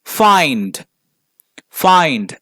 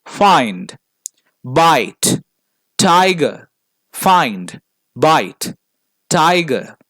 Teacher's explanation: so we begin in an A and end in an e